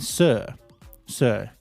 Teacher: our tongue is flat and relaxed in British English